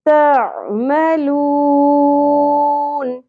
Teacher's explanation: عین پہ اچھے سے فوکس کرنا ہے آپ نے, بہت اچھے سے ادا ہونا چاہیے عین وسط حلق سے.